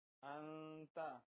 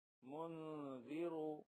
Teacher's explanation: نون کی آواز کو ناک میں چھپا کر پڑھنا چاہیے، نوک زبان تالو سے ہٹا کر، جیسے اردو میں پنکھا کے نون کو پڑھتے ہیں۔ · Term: اخفا